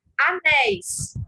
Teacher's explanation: Nessa sílaba tônica, apresenta aí um ditongo aberto, ei, seguido de S. Portanto, leva acento.